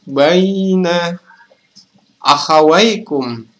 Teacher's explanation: Baina adalah mat lain karena ya sukun didahului oleh huruf berharokat fathah. Dibaca panjang selama 2 harokat.